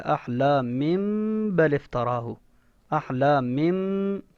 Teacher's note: احلامم، یہ دیکھیں آپ کو بتایا تھا چھوٹی سی جو بالکل جو ننھی سی میم ڈلی ہوتی ہے نا نون تنوین کے اوپر یا نیچے، اس کو اقلاب کا قاعدہ کہتے ہیں، یعنی اس کو بدل کر پڑھنا ہے. یہ دیکھیں نون تنوین کے بعد آگے با ہے نا، اس با کو میم سے بدل کر پڑھنا ہے